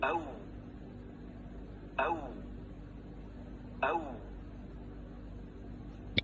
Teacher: kindly pay attention how the lips are circling and how the back of the tongue is raised.